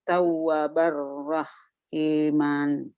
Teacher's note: Kalau ro dan lam tidak, huruf ro dan lam tidak memiliki sifat gunnah, makanya idghamnya juga idgham kamil bila gunnah. Dibacanya langsung ke huruf ro atau lam. Nunnya tidak dibaca sama sekali, gunnahnya pun tidak dibaca lagi. Pokoknya benar-benar sudah diabaikan, dianggap nggak ada.